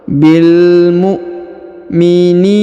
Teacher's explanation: Huruf ni dipanjangkan 2 harokat karena di depannya terdapat ya sukun.